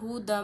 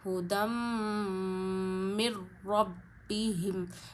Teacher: میں نے میم کی آواز ناک میں لے جائی اور ایک انگلی جتنی روکی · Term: غنہ